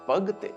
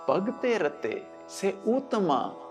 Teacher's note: ਆਖਰੀ ਅੱਖਰ ਤੱਤੇ ਨੂੰ ਸਿਹਾਰੀ ਦਾ ਉਚਾਰਨ ਲਾਮ ਦੀ ਲਘੂ ਧੁਨੀ ਵਾਲਾ ਹੈ